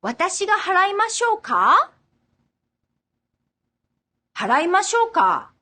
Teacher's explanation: Also, you may hear the difference in the intonation. When you volunteer doing something with ましょうか, you should use the rising intonation as opposed to the falling intonation heard in the suggesting question with the same ending.